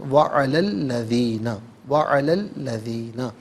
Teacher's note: وَعَلَى انفرادی طور پر پڑھیں گے تو علا میں لام پر کھڑا زبر ہوگا، علا ملا کر پڑھیں گے تو لام پر زبر، اسے الذین کے لام کے ساتھ ملائیں گے، درمیان میں سے الف یعنی حمزہ کو حذف کریں گے